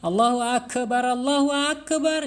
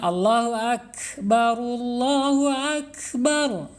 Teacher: Kap pun tidak boleh berhenti karena dia mempunyai sifat al-hams ya, al-hams itu mengalir ya. Jadi napas kita masih mengalir.